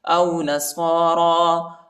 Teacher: را پر کڑا زبر آیا ہے، اس کو ایک الف کی مقدار تک کھینچیں گے، یا نہیں پڑھا جاتا، یا کے اوپر حرکت نہیں.